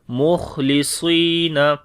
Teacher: صاد کو موٹا پڑھیں گے، لمبا بھی کریں گے، مخلصین، تو خا کے اندر صفت ہمس ہے جیسے کہ سانس جاری ہوگا